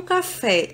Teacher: sílaba fé eu já sei que é a sílaba tônica então a sílaba tônica é fé é a última sílaba mais forte logo fé vai ser oxítona